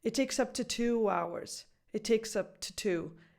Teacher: It's just a T sound. And then you fully pronounce the 2 as in the number right after.